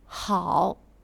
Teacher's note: Le H se prononce un peu comme le J espagnol de la jota, très accrochant.